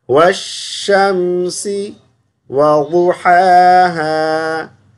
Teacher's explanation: یہ خیال کرنا ہے کہ میم پر غنہ نہ ہونے پائے